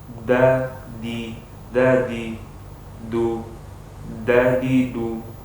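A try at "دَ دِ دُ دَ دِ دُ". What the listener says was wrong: Untuk domahnya masih belum pas ya antum. Masih ke Indonesiaan. Yang Indonesia itu du. Ya, du. Yang benar du. Du. Da bukan da, bukan di, bukan du. Tapi dadi, du. Dada, dada. Bukan dada. Kalau Indonesia bisa kita samakan dengan huruf D.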